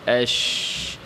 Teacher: জিহ্বার মধ্যখানে ভর করবে দুর্বলভাবে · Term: শিন